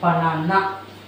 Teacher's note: so the na is longest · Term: stressed